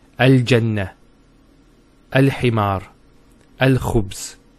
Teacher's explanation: So you see how the lam has the sukoon and it's pronounced in all cases. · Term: moon letters